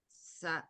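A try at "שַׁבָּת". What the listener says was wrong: Wait, I thought sin is never right. It's a sheen. Shabbat.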